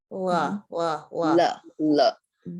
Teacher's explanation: Sometimes I actually teach the L first, because the way that we make the L is we stick our tongue up right behind the teeth, but we kind of dip the rest of it down.